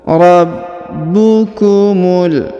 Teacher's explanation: Rabbukumul. Yang ini huruf ba ditahan dan ditekan ya, karena terdapat tanda tasdid.